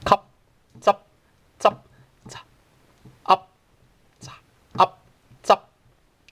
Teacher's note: towards the end, you have to close your mouth, but then you don't aspire the word, the sound of P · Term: glottal stop